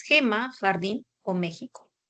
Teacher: la representación de la fricativa velar sorda por medio de la letra G, J o X.